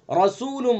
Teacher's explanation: رسول، را کو پر پڑھیں گے، را کے اوپر زبر ہے تو را کو پر پڑھیں گے